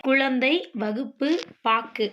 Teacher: ஆறு வல்லின உகரங்களும் சொல்லின் இறுதியில் வரும்போது ஒரு மாத்திரைக்கு பதிலாக அரை மாத்திரை அளவே ஒலிக்கும் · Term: குற்றியல் உகரம்